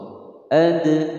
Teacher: Huwa ad, huwa pendek, ad ada dal sukun qalqalah sughra. Ad dibaca memantul.